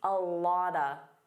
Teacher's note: A lot of becomes a lotta.